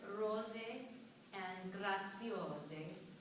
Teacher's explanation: I want to just fine-tune your Italian, okay? Intervocalic S, an S between vowels in Italian is a Z sound.